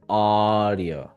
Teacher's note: we have a D in between vowel sounds, so it's going to become a flap D.